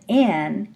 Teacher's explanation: I'm now going to close the oral tract at the alveolar Ridge I still have that long nasal residence the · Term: alveolar placement